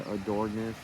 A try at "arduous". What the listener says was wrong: It's ARD. So sound those first three out together.